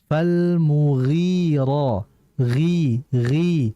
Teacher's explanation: huruf ghain ini sifatnya dia istilla namun bukan itbaq